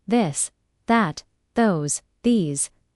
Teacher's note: let your tongue touch your teeth lightly but use your voice